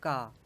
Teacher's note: पहला जो होता है का वर्ण जो होता है वो कंठ से बोला जाता है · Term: कंठ ध्वनि